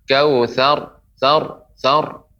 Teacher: untuk pengucapan ro ya juga tidak boleh menjadi dhammah